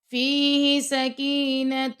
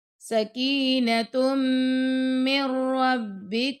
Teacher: और हा भी लंबा तो यह गलत हो जाएगा फीह सकीनत ता को मीम से मिलाएंगे और मीम को र से मिलाना है।